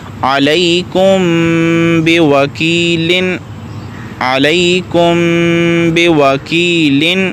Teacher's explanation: میم ساکن کو اس کے مخرج میں چھپا کر ادا کرنا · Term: اخفاء شفوی